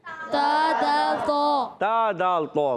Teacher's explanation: زبان کا سرا جب اوپر کے دانتوں کی جڑوں سے لگتا ہے تو تا دال تو ادا ہوتا ہے